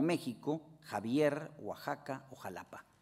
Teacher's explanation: el fonema velar sordo y fricativo que se asimila a la J